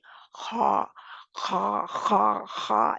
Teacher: इस्तेमाल करेंगे जाड़ को ऊपर उठाएंगे जुबान की जाड़ ऊपर उठाएंगे ख जो है आगे से नहीं निकालनी कहां से निकालनी है पीछे से निकालनी है पीछे से कहां से हल्क के आखरी हिस्से से